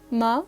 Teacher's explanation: the first tone is higher in pitch than the others